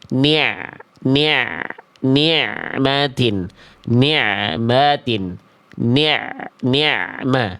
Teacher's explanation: tinggal tunaikan sifat ainnya, yaitu dialirkan lagi sedikit, jangan dihentak bunyi ainnya. Nikmatin, tapi diantar bunyinya. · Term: ain sukun